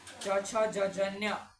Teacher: ચ વર્ગ છે એ આપણા મુખમાં તાલુ છે ત્યાં અડીએ તો આપણી જીભ તાલુ પર અડે તો જે ચ વર્ગ બોલાય